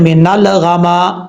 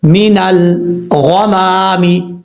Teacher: کچھ لوگ پڑھتے ہیں مینال غاما، ایسا نہیں کرنا. ل کی جو آواز ہے نا یہ نہیں آنی چاہیے، زبان لام کے اوپر جم جائے. مینل یعنی لام کے مخرج میں، مینل غمامی، اس طریقے سے. · نون کے بعد لام ہے، نون کو جب لام سے کنیکٹ کریں گے، یہاں پر ایک چیز کا خیال رکھیے گا، لام میں قلقلہ نہیں ہونا چاہیے. کچھ لوگ پڑھتے ہیں مینال غاما، ایسا نہیں کرنا.